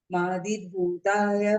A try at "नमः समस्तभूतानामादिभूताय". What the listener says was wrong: मादी मादी, मादी नहीं आदि। हम कैसे करेंगे? म को इस तरफ ले आएंगे, नमः समस्त भूतानाम आदि भूताय